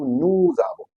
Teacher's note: if the following word starts with a vowel, we pronounce that s as z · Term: liaison